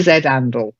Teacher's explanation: you'll find it in lots of different areas of the UK they don't pronounce the h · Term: drop the H